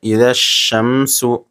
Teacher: یہاں الف لام حروف شمسی کے شروع میں ہے اس لیے الف لام کو نہ پڑھیں گے بلکہ بعد والے حرف سے ملا کر پڑھیں گے